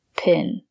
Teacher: it's not peen, but pin. The sound is more open, and it comes from here.